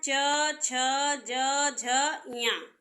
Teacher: च वर्ग च वर्ग क्या है च छ ज झ या इनका उच्चारण स्थान क्या है तालू है